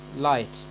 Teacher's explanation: through the mouth laterally along both sides of the tongue so the air goes through the sides of the tongue rather than the central part of the tongue